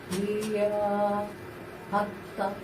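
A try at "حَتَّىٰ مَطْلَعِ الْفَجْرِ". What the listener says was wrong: হ্যাঁ, হাতটা তার উপরে কি খাড়া জবর আছে না? ওই যে স্টার্টের উপরে কি খাড়া জবর আছে? এখান থেকে একালি মাদ উচ্চারণ করতে হবে।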